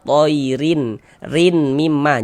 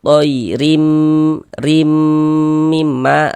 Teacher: Kemudian kita gunnahkan. Jadi di bagian rimnya itu suaranya itu kita tahan, kita panjangkan sejenak sepanjang 2 harokat. Toirim, rim mimma, rimnya yang dipanjangkan, yang didengungkan. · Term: idgham bi gunnah